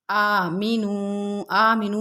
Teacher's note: قیلا لہم آمینو میں کھڑا زبر ہے، حمزہ پہ کھڑا زبر ہے، تھوڑا سا کھینچ کے پڑھیں گے، اور یہاں پر واو مدہ ہے۔